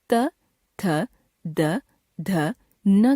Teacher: उदाहरण के लिए जब हम त वर्ग की ध्वनियों त, थ, द, ध, न का उच्चारण करते हैं तो जीभ की नोक ऊपर के दांतों के पिछले भाग को स्पर्श करती है, जिससे वायु के मार्ग में रुकावट पैदा होती है।